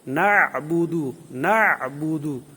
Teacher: با پر قلقلہ ہوگا، دال پر بھی قلقلہ ہوگا، یہ حروف قلقلہ میں سے ہیں۔